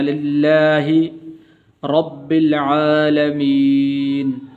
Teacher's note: لام کے نیچے زیر ہے، تو اس وجہ سے اس کو پر کر کے بھی نہیں پڑھیں گے، موٹا کر کے نہیں پڑھیں گے، بلکہ اس کو باریک پڑھیں گے